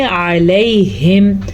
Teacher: یہ ہے عین اور یہ حلق کے درمیان سے نکلتا ہے